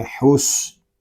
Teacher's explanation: واو زبر وا، حا صاد پیش حس، حا کو صاد کے ساتھ ملا کر پڑھیں گے، صاد مشدد ہے اس، اور یہ حروف مستعلیہ میں سے بھی ہے، اس کو موٹا یعنی پور بھی پڑھیں گے، اس کو پڑھیں گے حس۔